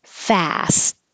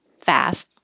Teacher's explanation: You don't have to say the T when you're saying the word by itself or if it's at the end of the sentence.